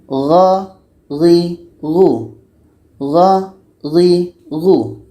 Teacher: Setelah itu gho gho ini sama dengan kho tadi letaknya sama-sama di ujung tenggorokan.